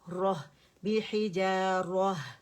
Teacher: وقف کی صورت میں راہ را موٹا ہوگا اور ہا باریک ہوگا